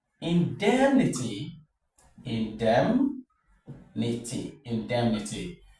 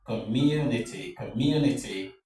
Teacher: make sure that you recognize the third syllable from the end of the word and stress it